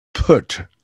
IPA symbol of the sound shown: p